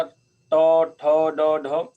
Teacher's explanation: और तीसरा वर्ग था ट ठ ड ढ, तो तालु से भी ऊपर थोड़ा सा अंदर जाके और बीच में बिल्कुल, उसको बोलते हैं मूर्धा